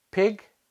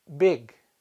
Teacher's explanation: The first pair is p, unvoiced, and b, voiced